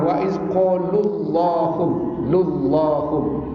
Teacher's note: la itu dibaca dengan taghlid tabai kerana sebelumnya berbunyi dhamma